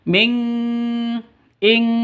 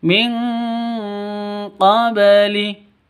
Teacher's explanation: Nun mati bertemu dengan qaf. Samar, didengungkan, siap-siap ke huruf qafnya ditambah ng. Ming, makanya dibaca dengan ing seperti itu ya. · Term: ikhfa hakiki